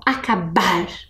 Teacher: Temos lá a sílaba mais forte no bar.